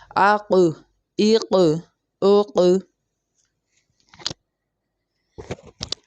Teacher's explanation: اب یہاں پر آواز لوٹتے ہوئی معلوم ہو رہی ہے، آواز میں ایک باؤنس آ رہا ہے